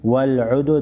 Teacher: दाल को हिलाकर पढ़ेंगे, दाल पर क़लक़ला करेंगे, दाल हुरूफ़ क़लक़ला में से है।